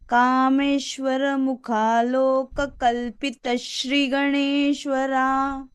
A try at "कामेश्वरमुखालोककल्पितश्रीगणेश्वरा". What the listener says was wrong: So Bhagini, it will be Kalpita Shri Ganeshwara. The Shri is Dirgha.